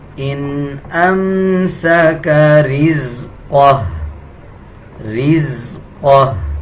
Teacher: جب وقف کریں گے تو یہ الٹا پیش جو ہا کے اوپر ہے اس کو سکپ کر دیں گے اور ہا کی آواز آدھی نکالی جائے گی